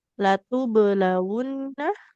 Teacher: Ada ba sukun dia harus dipantulkan.